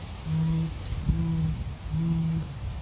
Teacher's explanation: uma voz bem de fundo de garganta sem brilho sem brilho